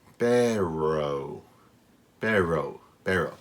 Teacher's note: The R would be stuck in the back of my throat, almost.